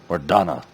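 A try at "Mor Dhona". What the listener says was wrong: Mordona. It's got an O in it. Mordona. Mordona.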